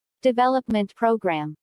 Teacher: since these two words make a compound noun the main stress falls on development